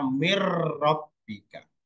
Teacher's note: masuk dengan tidak mendengung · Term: idgham